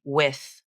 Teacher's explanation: Again, lips forward and round, tongue pulls up and back towards the soft palate, vocal cords tense and vibrate. Then the sound is released into the I as in bit vowel.